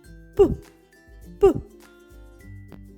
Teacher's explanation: Подивіться як міцно стиснуті губки коли ми вимовляємо звук п Губка об губку тільки торкається